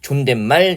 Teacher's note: 존댓말 니은 소리 덧나는 거고